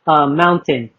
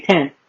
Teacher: We really don't pronounce the T's. T's are silent.